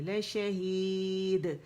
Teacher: دال کا باریک قلقلہ کریں گے